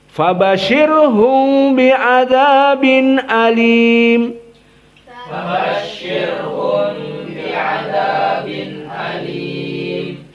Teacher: Ikhfa syafawinya terasa ya, hum bi itu. Adapun sekarang Abu Ja'far karena dia silatul mim tidak ada lagi ikhfa syafawi.